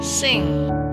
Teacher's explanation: The back of the tongue close against the soft palate. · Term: velar sounds